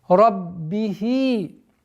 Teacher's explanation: После удвоения ба с кесрой уходим на естественную долготу в размере двух огласовок кесры.